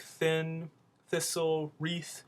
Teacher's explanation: there are a lot of unvoiced th sounds